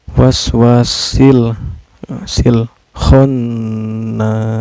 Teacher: ada alif lam bertemu dengan huruf qamariyah yaitu hokya ini Hai cara bacanya lam sukunnya dibaca secara jelas ya Enggak boleh memantul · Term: Alif Lam Qomariah